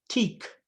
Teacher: Velar stops when they are after a front vowel. So like T, teak, that K will move forward in the mouth. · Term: more palatal k